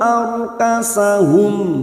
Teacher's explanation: ro sukun yang sebelumnya fathah kita baca tafkim tafkim yaitu tebal ciri-ciri dibaca tebal atau tafkim kita rasakan bibir kita seperti cemberut